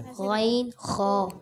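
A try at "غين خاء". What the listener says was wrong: अभी भी आपने गोल ग़ैन ख़ा, ग़ैन ख़ा, बगैर होंठ गोल हुए ग़ैन ख़ा, क्या पढ़ेंगे?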